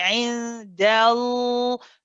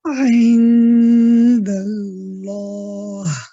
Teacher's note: So as soon as you say ain dal, already the back of the tongue is in position. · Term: heavy lam